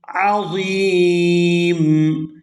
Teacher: آیت مکمل ہو رہی ہے تو یہاں پر وقف کریں گے اور وقف کی صورت میں میم جو ہے یہ ساکن ہو جائے گی